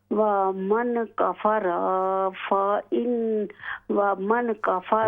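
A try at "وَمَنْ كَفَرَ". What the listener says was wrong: یہاں غنہ کریں، اخفا ہے یہاں پر، ومن کفر دیکھیں یہاں پر ومن کفر، را پر صرف زبر ہے، لمبا نہ کریں اس کو، کفرا یہ الف بن جاتا ہے، ومن کفر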